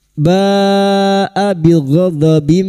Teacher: bertemunya mat dengan hamzah dalam satu kalimat mat wajib mutasil 5 harokat kita panjangkan